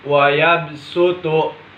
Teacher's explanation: menggantikan bunyi huruf shod menjadi Sin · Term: ibdal, Ibdal